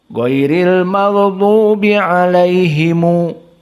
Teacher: mim al-jama', him dibaca himu